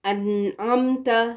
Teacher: پھر دیکھیں عین کے ساتھ انعمت، اس کو انعمت اس طرح سے نہیں، جلدی سے نون کو کلیئرلی پروناؤنس کر کے پھر آگے بڑھنا ہے